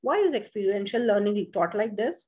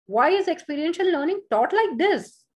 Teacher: The speaker can use a falling pitch at the end of the question word on the word this